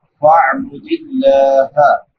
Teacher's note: لفظ اللہ باریک ہوگا کیونکہ لفظ اللہ سے پہلے زیر ہے